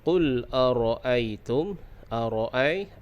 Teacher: ai itu menjadi hukum lin, dilembutkan